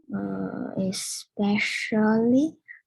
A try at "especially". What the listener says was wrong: Yes, but 你拉长 especially. 真的有这首歌啊。Okay, especially double L, 记住啊。But you see the word.